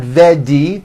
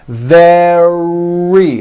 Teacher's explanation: Make sure that the R sound is strong and your lips are coming forward. Your tongue is back and you push out the R. Very. Like that.